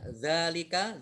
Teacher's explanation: zal fathah berdiri mat tabi'i dibaca panjang 2 harokat